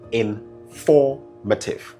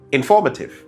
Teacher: The stress falls on the second syllable. For form. That is where the stress is.